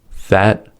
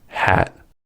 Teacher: For the fa sound, air escapes between top teeth and bottom lips. For ha, air escapes from the glottis. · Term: voiceless fricatives